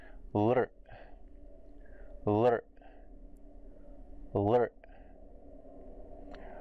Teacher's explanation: So to make it more like a vowel where it's carrying the air, we curl it back to the retroflex, striking the dental first